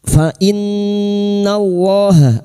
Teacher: Fa innallaha lam jalalah yang didahului fathah kita baca tafkim